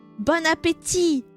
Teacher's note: You do not pronounce the last T. Bonapet. There is no Tit.